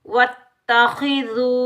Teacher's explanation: खा हरुफ़ मुस्तआलिया मोटा पढ़ेंगे। वाव मद्दा को एक अलिफ की मिकदार में खींच कर अदा करेंगे।